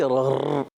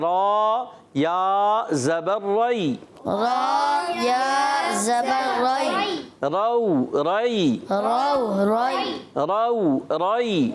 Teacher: تکرار ہوتی ہے مگر مشابہت تکرار, اصل تکرار نہیں ہوتی